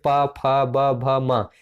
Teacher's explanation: ओष्ठ व्यंजन में आप देखेंगे जो दोनों होठ होते हैं आपके, होठ ये जो है स्पर्श करते हैं